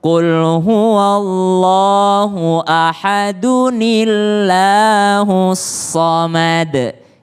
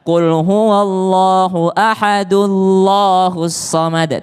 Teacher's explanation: Qul huwallahu ahadu dan nunnya terbaca berbaris kasrah atau bawah. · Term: nun kecil